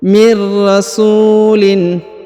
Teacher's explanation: huruf tanwin in dibaca jelas ya, tidak ada yang mempengaruhi · huruf su diayun sekali karena di depannya terdapat waw sukun